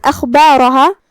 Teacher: ہم خا کو حلق کے اوپر والے حصے سے ادا کریں گے، جو کہ را پہ زبر ہے تو اس کا حکم ہے تفخیم، تو اس کا دھیان رہے.